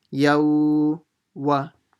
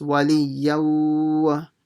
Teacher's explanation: So now that you've learnt the rule, so when you have a tanween letter, and in the next word you have a waw mushaddada, then you'll do idghaam with ghunnah. Idghaam meaning the ya will merge into the waw and do ghunnah at the same time.